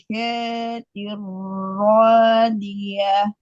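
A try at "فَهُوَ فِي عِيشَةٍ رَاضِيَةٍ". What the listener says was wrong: Syaknya jangan panjang. Jelaskan ain, syaknya jangan panjang.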